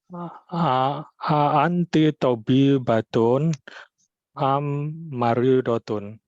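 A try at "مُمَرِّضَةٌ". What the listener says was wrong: Itu memnya 2, Pak. Jadi bukan maridotun bacanya. Memnya 2 itu.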